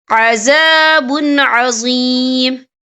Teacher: لَهُمْ فِي الدُّنْيَا خِزْيٌ وَلَهُمْ فِي الْآخِرَةِ عَذَابٌ عَظِيمٌ، یہ دیکھیں عذابٌ، با کے پر تنوین ہے، تنوین کے بعد جو ہے عین آ رہا ہے، اور عین جو ہے حروف ہلکی کا ورڈ ہے تو ہم یہ اظہار کریں گے، ہم اسے بنا غنّے کے پڑھیں گے